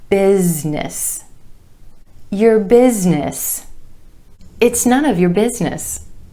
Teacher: Emphasis on the first syllable and the I vowel sound